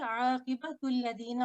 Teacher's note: आक़िबतुल्लज़ीना और लाम को हमने थिन पढ़ना है, सिर्फ लामुल जलाला को हम थिक पढ़ते हैं यहाँ पे, बाकी लाम जो है वो थिन पढ़े जाएंगे।